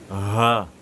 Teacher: ça provient du fond de la gorge